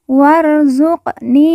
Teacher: Qaf sukun atau qaf mati kita baca pantul karena merupakan huruf qalqalah.